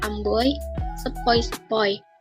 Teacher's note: Diftong naik menutup maju, oi, misalnya pada kata amboy, sepoi-sepoi.